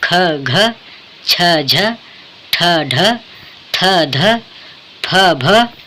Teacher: ऐसे व्यंजन जिनको बोलने में अधिक प्रयत्न करना पड़ता है और बोलते समय मुख से अधिक वायु निकलती है, उन्हें महाप्राण व्यंजन कहते हैं